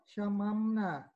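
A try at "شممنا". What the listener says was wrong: Panjang.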